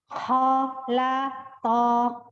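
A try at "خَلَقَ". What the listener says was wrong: Ho-nya dibuka lagi. Mulutnya dibuka. ho naik. Ho, angkat pangkal lidah naik ya. Ya, kemudian ketika pengucapan la kan ya, la, kemudian to-nya tinggal perubahan ujung lidah saja. Laqo gitu, mulutnya tetap dibuka lagi. Kurang to-nya. Sambil mengucapin to itu dibuka mulutnya, ada perubahan, ada pergerakan di rongga mulutnya.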